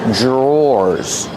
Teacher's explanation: The pronunciation is not like the spelling. Pronunciation DR makes a J sound. J plus the R together.